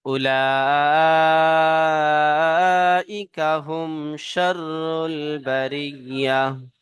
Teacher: মিম সাকিনের পরে বা আর মিম ছাড়া অন্য হরফ শিন এসেছে, তাই একে ইজহারে শাফাবি বলা হয়, বিনা গন্নায় জাহির করে পড়তে হয়।